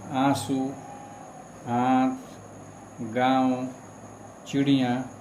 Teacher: तो हम यह भी कह सकते हैं कि इन अनुनासिक स्वर जो है, इन स्वर के उच्चारण में ध्वनि मुख के साथ साथ नासिका द्वार से भी निकलती है